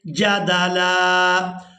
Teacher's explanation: وقف کی صورت میں لام کو ایک الف مقدار کھینچ کر ادا کریں گے، کیونکہ اب ہم نے اس لام پر ایک زبر ادا کرنی ہے.